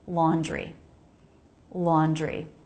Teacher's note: The word laundry is interesting because it has a DR cluster. And often Americans pronounce the DR cluster so it sounds like JR. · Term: JR cluster